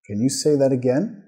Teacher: Tono subiendo al final de la pregunta.